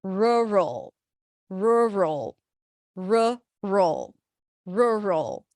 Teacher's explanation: It's a relaxed r, so round your lips, and then the cook, look, book vowel, r, and then it's an R sound, a schwa, and an L, roll. It's a dark L, but it feels like it's almost like you're adding an O sound